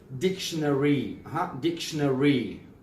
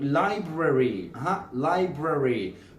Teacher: So the ARY sound will be pronounced very clearly in American accent.